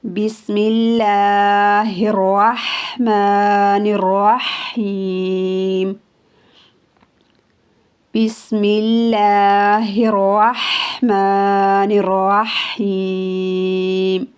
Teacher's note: لفظ اللہ میں ہا استعمال ہوا ہے، الرحمن اور الرحیم میں ح استعمال ہوا ہے جسے حلق سے ادا کریں گے